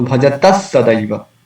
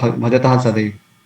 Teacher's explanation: So instead of Visarga, because Sa is following, so that is according to the rule, we can pronounce Sa here. So Bhajatas Sadaiva instead of Bhajatah Sadaiva.